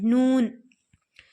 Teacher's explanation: زبان کا کنارہ اور اوپر کے ایک نکیلے دانت سے لے کر دوسرے نکیلے دانت کے مسوڑوں سے ادا ہوتا ہے